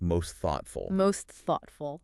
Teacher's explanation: So, if you have most thoughtful, even if the T in most isn't super strong, the words can still blend sounding like most thoughtful. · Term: linking